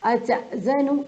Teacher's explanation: أتأذن، جھٹکا، حمزہ کے اوپر جزم ہے تو جھٹکا